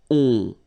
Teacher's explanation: you don't hear any N, so it's really on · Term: nasal